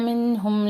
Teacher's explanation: نون ساکن کے بعد ہا اظہار کر رہے ہیں